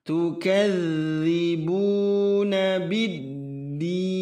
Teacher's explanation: Biddin, menggunakan i dipanjangkan 6 harakat